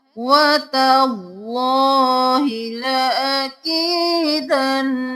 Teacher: अल्लाह का लफ्ज मोटा करते हुए ता को बारीक रखना है, अल्लाह का लफ्ज मोटा पढ़ना है।